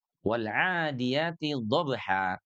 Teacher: Perhatikan sahabat Al-Quran, di sini ada fathatain. Pada saat diwakaf, fathatain itu berubah menjadi mad. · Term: mad iwad